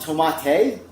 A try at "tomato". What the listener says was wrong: Well, now you're just putting different letters in there. There's an O at the end, not an AY.